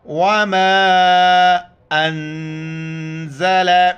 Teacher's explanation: مد کی وجہ سے 4 الف کی مقدار اوپر کھینچنا ہے